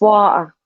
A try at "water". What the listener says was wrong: Well, I pronounce the T when I say it. You don't. You go water.